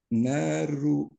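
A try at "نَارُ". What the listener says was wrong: Narunya tebal, Pak. Ru. Naru.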